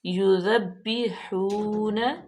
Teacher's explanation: ذال پہ بالکل بھی سیٹی کی آواز نہیں آئے گی، با مشدد ہے اور واو مدہ ہے۔